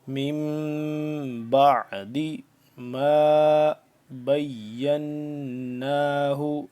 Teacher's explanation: میم ساکن کے بعد جب با آ جائے تو ہم یہاں پہ اخفا کریں گے